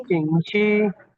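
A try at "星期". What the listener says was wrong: शिंगची, शिंगची, ये छ नहीं है, छी, ये वो आई है ना, छी, शिंगची।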